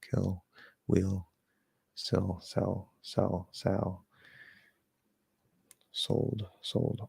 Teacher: lightly but it does feel like right in here because the the tongue is being pushed back and slightly down in the middle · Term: dark l